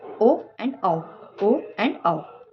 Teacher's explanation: ओस्ट कंठ जिनको बोलने के लिए ओठ प्लस कंठ दोनों का यूज किया जाता है